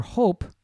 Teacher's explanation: notice there's no voicing with the P